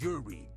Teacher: in Japanese there is no R there is no l It's a combination of the both cuz if you pronounce it like that it's Uli it's yudi